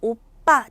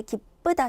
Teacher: 오와 아 모음 사이에서 오빠 된소리가 났고요